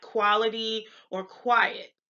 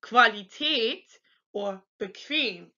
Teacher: So you'd say something like quality or quiet. In German, it's actually the KV sound. So you'd say Qualität or bequem, like the letters on the words on the screen.